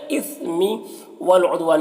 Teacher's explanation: یہاں پر لام ساکن ہے تو پیچھے والے متحرک حرف واو سے مل کر پڑھا جائے گا